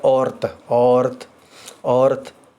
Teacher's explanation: ਜਦੋਂ ਅਸੀਂ ਔਰਤ ਬੋਲਦੇ ਹਾਂ ਉਦੋਂ ਵੀ ਹਲਕੀ ਜਿਹੀ ਐੜੇ ਤੋਂ ਬਾਅਦ ਹ ਦੀ ਆਵਾਜ਼ ਆਉਂਦੀ ਹੈ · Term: ਘਨੋੜਾ